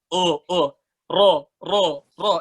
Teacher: angkat lidah belakangnya, mundurin ke arah amandel gitu. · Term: huruf ro